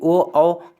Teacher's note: ओ औ का उच्चारण स्थान कंठ तथा ओष्ठ दोनों होता है।